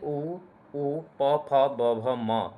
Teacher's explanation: और ओष्ठ से उ प फ ब भ म ये ओष्ठ से हो जाएगा।